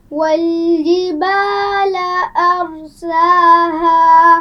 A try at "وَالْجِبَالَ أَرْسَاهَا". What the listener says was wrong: جیم کو واضح کیجیے. والجبال.